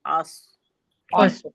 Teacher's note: फिर ब की अदायगी बी, बी, फिर हमजा को स्वाद से मिलाया हमने, अस, अस, देखिए अस मुंह के खाली हिस्से से हमजा की अदायगी करी, अ, स्वाद, स्वाद मोटा हर्फ है, सो, अस, अस, अस, अगर हम अस बोलेंगे तो सीन की अदायगी होगी, क्योंकि सरसराहट आ जाएगी उसमें, ٹھیک ہے نا.